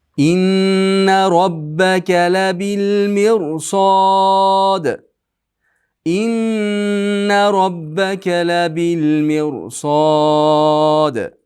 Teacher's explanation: Inna nuni g'unnasi eng komil tarzda ushlab turamiz. · inna robbaka labil mirsad bo'lib ro yo'g'on o'qiladi. Chunki undan keyin sod harf bor. · Mirsod dalda qalqala qilamiz.